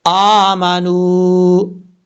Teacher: واو ساکن سے پہلے پیش ہے نون کے اوپر، ایک الف کی مقدار اس کو لمبا کر کے پڑھیں گے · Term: واو مدہ